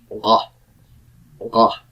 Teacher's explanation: way back in the throat way back past where the G is pronounced in the back of your throat this is what's called a guttural consonant I will not pronounce